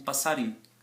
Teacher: Esse inho final vira na maioria das vezes uma consoante, uma vogal nasalizada.